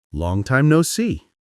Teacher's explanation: tone might drop a little at the end, giving it a warm, reflective feeling.